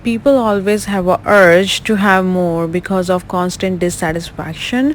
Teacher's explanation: I like how at the end of that first thought group, your tone was slightly higher, telling me you're not done. Then when you got to the end of the sentence, your tone fell. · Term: intonation